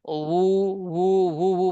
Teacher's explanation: বাতাস বের হয়নি, ঠোঁট গোল হয়েছে শুধু, আর কণ্ঠনালী থেকে আসছে আওয়াজ। আর আমরা করব কি, দুই ঠোঁট দিয়ে উচ্চারণ করবো, উ, উ, উ, উ, বাতাস বের করে না, উ, U.